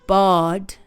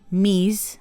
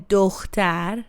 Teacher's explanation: Each vowel keeps its sound steady, no gliding. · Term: pure vowels